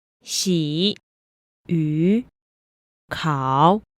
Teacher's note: the canonical third tone starts low dips lower and then Rises he how some people call it the falling rising tone but